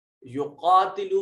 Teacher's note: یقاتلو میں قاف کو موٹا بھی کریں گے اور ایک الف کے برابر لمبا بھی کریں گے، اس کے اوپر کھڑی زبر جو ہے یہ الف المدیہ الصغیرہ کے قائم مقام۔